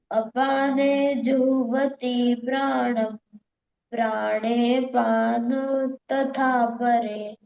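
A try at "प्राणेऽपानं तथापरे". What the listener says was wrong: हाँ प्राणे पान तथा परे बोला ना, प्राणे पानम तथा परे। हाँ अब ठीक है, उस पे बिंदी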